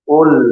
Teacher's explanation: di situ qof-nya ditebalkan qul